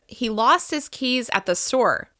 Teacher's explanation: In a normal, neutral sentence, you can hear that rise and fall between stressed syllables of stressed words.